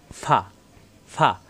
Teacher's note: ফায়ের মাখরাজ হল উপরের দাঁতের আগা নিচের ঠোটের পেট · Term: ফায়ের মাকরাস